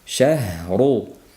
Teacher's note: Bu yerda h ga e'tibor qaratamiz ko'proq, chunki h da sirg'aluvchi sifat bor. Shah bir muddat sirg'alish kerak.